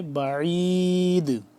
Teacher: بعید دال ہو گیا ساکن تو دال پہ ہم قلقلہ کریں گے